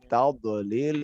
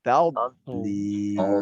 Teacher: Karena dhad bukan huruf yang syiddah. Ya, dia rokhwah. Jadi dia harus mengalir. Pada saat dia mentok kepada lisan pada langit-langit itu dijaga sedikit, dijaga ya, sehingga dia membuat sebuah aliran.